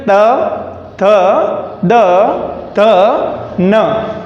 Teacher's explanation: त वर्ग पूरा दंत से, यानी जैसे जीवा क्या करती है, दंत को टच करके उच्चारित होती है